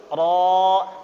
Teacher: ketika menyebutkan huruf ro itu getarannya hanya 3 kali ya. Tidak boleh banyak-banyak.